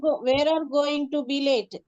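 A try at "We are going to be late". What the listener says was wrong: వేర్ ఆర్ అని చదవకూడదు. అది ఎలా చదవాలి అంటే విఆర్, ఫస్ట్ ఆర్ఈ పెట్టారు కదా, అది ఎలా చదవాలి అంటే VR we are గోయింగ్ టు బి లేట్ అంటే మనం లేట్ అవుతామేమో, టైం ఎంత అవుతుంది, మనం లేట్ అవుతామేమో.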